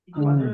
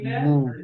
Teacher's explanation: জি। এবং জেরের আওয়াজ সামনের দিকে যায় আর ঠোঁট গোল হয়